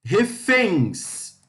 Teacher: fens é a sílaba tônica